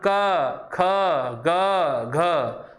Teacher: उच्चारण नाक से नहीं हो रहा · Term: निर्नुनासिक